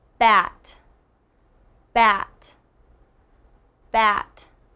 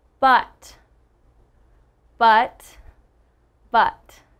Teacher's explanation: ah and uh they're very short sounds